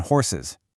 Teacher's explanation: for those hissy sounds, we add a whole extra syllable